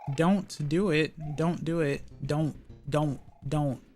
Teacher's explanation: You can't hear the T when I say don't, right? But you know it's there.